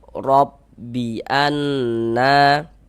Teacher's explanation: Robbi anna, huruf ro memiliki ini tanda baca fathah ya, harokat fathah, baris fathah nih ya, yang baris miring di atas nih. Maka ini huruf ro dibaca tabkhim, dibaca tebal sehingga pangkal lidah kita naik terangkat ke atas